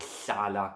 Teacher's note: lifting your tongue up to your palate and blowing out through the sides.